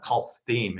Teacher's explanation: Now, a word about some arcane Hebrew phonology. The S sound that you see in Kesed is not the standard S. It's got a bit of an L to it as well, an L sound merging with the S sound. So that when this was transmitted into Greek, Latin, and the other European languages, including English, we say Chaldea in English, the Chaldeans, but in Hebrew, it's the Kasdim.